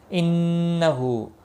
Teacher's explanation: نون مشدد پر غنہ ہوگا